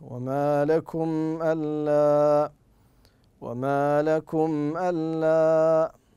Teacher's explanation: فتظهر الميم في النطق عند ملاقاتها للهمزه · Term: الاظهار